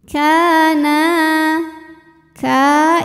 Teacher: hukumnya adalah Mad Thobi'i dahohiri sebab ada Alif didahului harakat fathah maka huruf Kaf ini kita panjangkan dua harakat saja